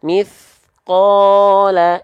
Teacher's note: Mithqala, itu nggak diayunkan tapi 2 harokatnya terjaga.